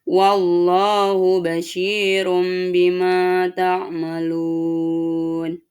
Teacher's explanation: mengubah suara N menjadi M atau iqlab